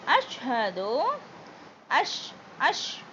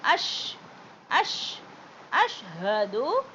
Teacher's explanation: ஷின் sound வரும் அஸ் சொல்லக்கூடாது. அஷ் அஷ் அஷ்ஹது அல்லா இ நல்லா நீட்டுங்க.